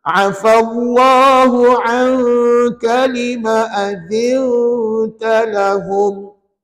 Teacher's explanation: pastikan bunyi ain tu betul-betul di tengah kerongkong. Jangan angka.